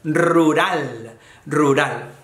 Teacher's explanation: la doble erre, la erre vibra mucho en español. Y luego la erre menos vibrante